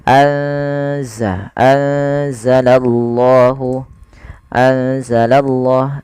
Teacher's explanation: kita menebalkan pada lafal Allahnya karena di sini lafzul jalalah yang didahului dengan huruf fathah atau damah maka dia akan ditebalkan huruf Allahnya